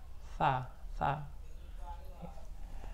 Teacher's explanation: Tha ini ujung lidah dengan ujung gigi atas. Tha.